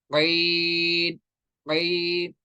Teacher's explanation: और आइन होता है मिडल ऑफ द थ्रोट से।